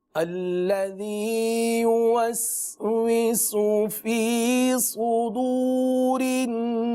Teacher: صدور، سین نہیں ہے، صاد ہے، پر پڑھیں گے